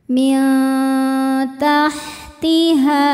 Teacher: Selanjutnya ada hukum ikhfa hakiki aqrab sebab ada nun sukun bertemu dengan huruf ta. Cara membacanya bunyi nun disamarkan ke ta disertai bunyi dengungan. Dengungnya sedikit karena ta makhrajnya masih dekat dengan nun.